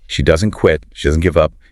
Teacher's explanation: The repetition creates a hammering, deeply emphatic rhythm.